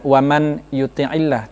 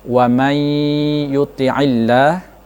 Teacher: hukum tajwidnya adalah idgham bi gunnah, langsung didengungkan atau dimasukkan dalam kalimat setelahnya · bukan waman yuti'illah, tetapi bunyinya adalah wamay yuti'illah, ya itu nun dihilangkan